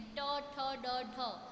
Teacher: એટલે એમને મૂર્ધન્ય વ્યંજન, જેમ કે ટ, ઠ, ડ, ઢ છે ને, જીભ તાળવાના આગળના ભાગને સ્પર્શે છે